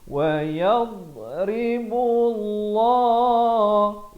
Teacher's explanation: Ini lafzul jalalah dibacakan dengan tebal 2 harakat.